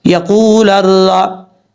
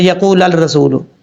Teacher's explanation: جب لام کو را سے ملائیں گے بیچ میں الف اور لام کو چھوڑ دیں گے، نہیں پڑھیں گے.